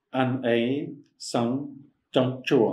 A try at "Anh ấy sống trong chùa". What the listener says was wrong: You gotta close your mouth with ong. Anh ấy sống trong chùa. Every time you see ong, you gotta close your mouth.